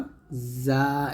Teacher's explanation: জিহ্বাটা নিচে দাঁতের মাঝখানে লাগিয়ে যা আমরা পাতলা করে উচ্চারণ করব